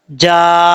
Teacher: नून के ऊपर शद है इसलिए यहाँ पे गुन्ना भी करेंगे